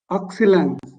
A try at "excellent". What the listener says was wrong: Excellent. जिसे हम comment बोलते हैं ना, comment. C-O-M-M-E-N-T, comment. So वैसे ही excellent. T नहीं pronounce करना.